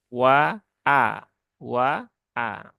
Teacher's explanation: jangan sampai hamzahnya terayun ya menjadi Wa Wa gitu kan tapi pastikan hamzahnya itu dia jelas ya wa a wa a bukan wa bukan wa tapi wa